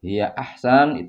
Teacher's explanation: huruf 'ha' tidak ditekan dengan cukup kuat.